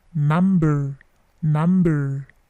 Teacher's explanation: Number, sometimes ada yang menyebutkan dengan number. Ada juga yang menambah bunyi R sedikit